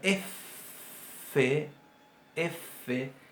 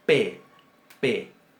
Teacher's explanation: Lo mismo se va a aplicar a la Fe y la P. La primera va a sonar F, F, y la segunda va a sonar oclusiva, P, P. Entonces, sin puntito, Sin dagesh va a sonar F.